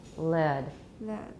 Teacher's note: The initial lateral in the first word has formants with central frequencies.